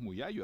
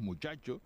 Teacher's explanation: nuestra Che tiene un punto de articulación diferente de la che peninsular es una Che más atrasada con el punto de articulación de la y y más Sonora y a los oídos de un de un foráneo de un